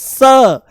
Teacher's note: ये स है, ये दांतों से बोला जाता है